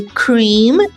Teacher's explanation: O M no final é produzido como um ditongo nasalizado, como em Porém, no inglês, como em cream and ocorre o encontro dos lábios no final das palavras. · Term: nasal bilabial